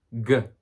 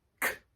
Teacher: G uses the voice, and without the voice, k, it's a K sound.